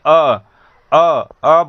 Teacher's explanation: हमारे मुख के बीचों बीच रहता है, मध्य में रहता है, इसीलिए इसे मध्य स्वर कहते हैं।